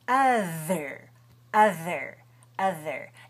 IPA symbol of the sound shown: ð